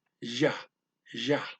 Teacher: It's a bit above a Y, but it's still a flat tongue J.